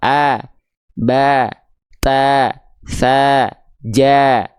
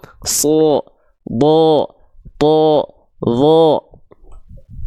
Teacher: pangkal lidahnya enggak naik nama sifatnya istifal a ba ta tsa ja beda dengan huruf tebal SH D · Karena si pangkal lidahnya naik. Kalau huruf tipis, kenapa keluarnya tetap vokal A ketika fathah? Karena pangkal lidahnya nggak naik, nama sifatnya istifal.